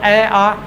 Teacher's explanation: अब स्वर बोले तो स्वर ए आ दोनों कंठ से निकलते हैं